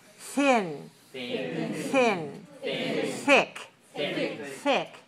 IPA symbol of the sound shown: θ